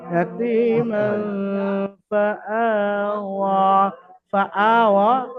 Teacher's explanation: এর মধ্যে কি এসছে, ফা এসছে 15টি অক্ষরের মধ্যে। তো দুজাবার অর্থাৎ তানমিনকে এক আলিফ পরিমাণ গুন্না সহ পড়তে হবে।